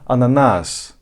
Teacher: ananas biraz daha s'yi uzatıyorum Türkçeye kıyasla